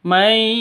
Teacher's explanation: nun mati bertemu dengan Ya cara bacanya itu masuk ke ya